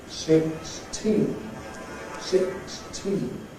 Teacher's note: If we take the sort of morphological setup of the word, obviously it is 6 and then T. So the T of teen ought to be aspirated because it's at the beginning of the stressed syllable.